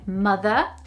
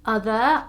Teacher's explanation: you wouldn't pronounce the r in mother or in other or in car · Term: forget about your r's